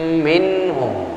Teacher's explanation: tempat keluar hurufnya khayshum, pangkal hidung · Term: gunnah